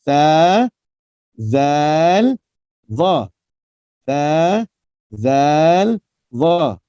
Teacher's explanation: 3 huruf ni tuan-puan rahmati Allah, wajib keluar lidah.